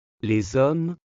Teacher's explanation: Et on fait aussi la liaison. On dit les hommes, on entend le son Z.